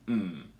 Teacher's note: there's one voiced labial nasal sound